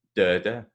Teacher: so the stress is at the start, but you still hear the sound and ert.